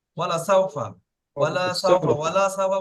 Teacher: এটা ওয়াওটা আছে হারাকাতের পড়া, লামটাও হারাকাতের পড়া, সিনটা লিনের পড়া, ফাটা হারাকাতের পড়া, তাহলে এখানে কোনোটা টান নেই